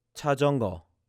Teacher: the very first symbol sounds more like a CH, but the next one sounds like a J sound.